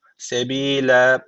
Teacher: Sebile ayet bitti duracağız son harf 2 üstüne bitmiş nasıl duruyoruz üstünün biri iptal diğer üstün bir Elif uzatıyor öyle duruyoruz